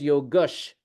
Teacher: the ah sound becomes a sibilant sh